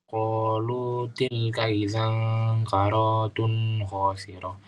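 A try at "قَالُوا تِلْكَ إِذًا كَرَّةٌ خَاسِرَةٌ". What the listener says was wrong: Karra tasdid. Idzan karratun.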